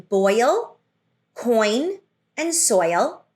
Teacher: oi in boil starts with an O or an aw sound and glides into a long E sound, creating the diphthong oi.